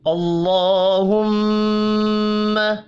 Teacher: اللہ کا نام زبر کی وجہ سے پر پڑا جائے گا، میم مشدد پر غنہ کریں گے۔